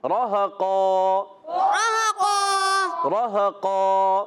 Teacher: Good, راہ قا میں را پر زبر آن کی را پر ہو جائے گا، ہا کی ادائی کلیئر کرنی ہے، دو زبر کی تنوین کو الف سے بدلیں گے اور قاف کو موٹا رکھیں گے اور اس کا الف بھی موٹا ہو جائے گا، راہ قا، راہ قا، گڈ۔